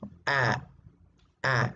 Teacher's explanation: Por eso, ¿no? Por eso es central, porque tu lengua se ubica en la parte de atrás, en el centro, y tu boca se abre más.